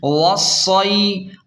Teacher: حمزہ زیر ای، رحلۃ الشتاء، واو صاد زبر وص، صاد یا زبر صی، وصی، واو کو صاد کے ساتھ ڈائریکٹ ملائیں گے اور شد بھی ہے، سختی سے پڑھیں گے۔ وصی، اور یا لین کو جلدی اور نرمی کے ساتھ پڑھیں گے